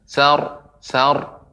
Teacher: jadi pengucapan sa, kemudian ro-nya ditebalkan.